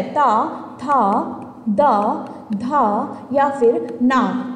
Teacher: ता वर्ग के सभी व्यंजन दंत ही होते हैं।